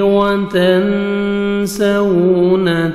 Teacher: نون ساکن کے بعد سین ہے، اخفا کریں گے، نوز میں ساؤنڈ لے کے جائیں گے، 15 لیٹرز میں سے سین ہے، آگے واو لین ہے، واو پہ لپس کو راؤنڈ میں لے کے جائیں گے، نرمی سے ادا کریں گے۔